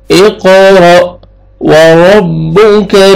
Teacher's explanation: اقرأ وربک الاکرم، اقرأ، قاف قلقلہ ڈبل ساؤنڈ آئے گا، حمزہ کو مجزم ہے، جھٹکے سے پڑھیں گے۔ اقرأ وربک، را کو مرزبر ہے، را کو موٹا کر کے پڑھیں گے، کاف کو باریک کر کے پڑھنا ہے